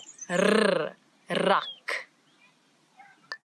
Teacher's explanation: it's the rrr, as if your tongue is jumping up and down in your mouth